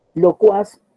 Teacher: Locuaz es una palabra aguda porque Tiene mayor fuerza en la pronunciación de la última sílaba.